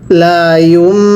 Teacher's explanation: আমি কিন্তু লা ইউন পড়ি নাই ইয়াকে মিমের সাথে লাগাই ইয়াকে মিমের সাথে লাগিয়ে গুন্নাহ করছি